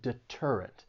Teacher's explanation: this word has three syllables the stress is on that second syllable